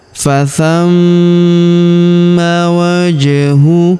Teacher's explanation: Huruf ma kita tahan dan kita tekan karena terdapat tanda tasydid di atasnya.